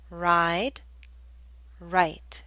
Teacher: the I and ride should be longer because the D is a voiced consonant